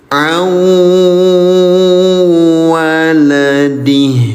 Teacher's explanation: jangan dibaca sebagai 'an waladih', tetapi gabungkan langsung ke dalam huruf Wau. A waladi, tahan selama dua ketukan. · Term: Idgham Bighunnah